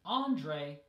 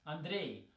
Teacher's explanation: But again, in English, it's Andre, stress on the first syllable. And in Russian, it's Andrei, stress on the second syllable